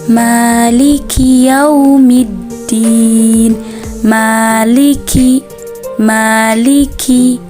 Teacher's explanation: huruf Kaf itu mempunyai sifat hams yang artinya nafas keluar bersama huruf